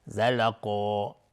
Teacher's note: قاف از حروف استعلاء غلیظ تلفظ میشه، الف هم تابع قاف غلیظ تلفظ میشه